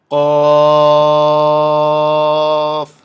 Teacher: হরফটি জিহ্বার গোড়া তার বরাবর উপরের তালুতে লাগাইয়া শক্ত করে বলতে হয়